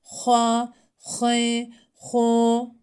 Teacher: H harfini boğazdan hırıltılı bir şekilde çıkarıyoruz.